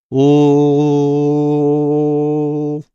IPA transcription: l